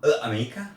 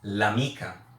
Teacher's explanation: you would pronounce l'amica in one word. For the feminine word, if the word refer to a person that it's a female, it's a feminine word.